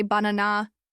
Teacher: In English, we stress the middle one, so we say banana, not banana or banana. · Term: stressed syllable